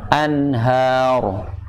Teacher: walaupun dia huruf H besar, namun tipis bacanya. Jangan terpengaruh huruf ro-nya. Anhar. Yang tebal ro-nya. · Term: ha tipis